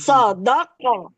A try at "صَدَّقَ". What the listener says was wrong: صدق نہیں، صد، ڈبل ڈبل پڑھنا ہے نا. پھر دال قاف زبر. ارے دال قاف زبر ابھی بتایا تھا نا. زبر دق.